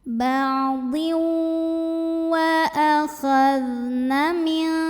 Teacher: Jadi tidak sempurna masuk tanwin ke wawnya ya. Di sini ada dengung dari tanwin yang masih terbawa saat mengucapkan waw. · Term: idgham bi gunnah